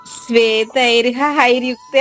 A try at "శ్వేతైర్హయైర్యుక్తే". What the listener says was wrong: అవును, హహాయి కాదు, హయైర్. హా తర్వాత యా ఐకారంతో ఉంది. శ్వేతైర్ హయైర్, శ్వేతైర్ హయైర్.